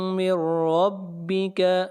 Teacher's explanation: طائف من ربک، یہاں پر نون ساکن کے بعد را ہے، ادغام بلا غنہ کریں گے، اور را کو موٹا پڑھیں گے، را کے اوپر زبر ہے۔